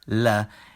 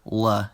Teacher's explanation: Light means alveolar, la, and dark means velar, la, in this case. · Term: light versus dark L's